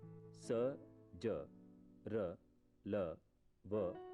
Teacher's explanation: दांत के पिछले भाग मसूढ़ा से स, ज, र, ल, व निकलते हैं